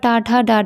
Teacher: सी है आपका मूर्धव्य, तो मूर्धव्य में आपका टाठा डाडा, यानी कि जीभ कहीं ना कहीं आपकी हल्की सी घूमती है ऊपर जाके